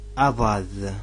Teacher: C'est un D qui se dit emphatique.